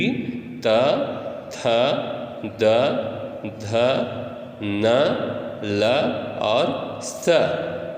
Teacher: लृतु लसानाम दंतः का मतलब होता है लरी लृ त थ द ध न ल और स, ये सारे का उच्चारण स्थान दंत है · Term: दंत वर्ण